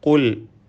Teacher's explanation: ഖാഫ് തഫ്ഖീം നൽകി പെരുപ്പിച്ച് സ്വരഭാരത്തോടെ ഉച്ചരിക്കണം.